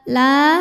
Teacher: La hukumnya adalah mad tabi'i zahiri, sebab ada alif yang sebelumnya berbaris fathah. Cara membacanya dipanjangkan lamnya 2 harokat saja.